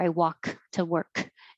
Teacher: don't make the k release the air i walk to work just hold your tongue in the k